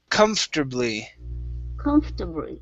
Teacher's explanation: We're going to skip right over the R, the OR, and go to terbly